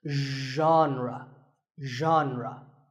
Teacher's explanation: The correct pronunciation is genre. Pay attention to the first sound. It's like sh, but you have to put your voice into it.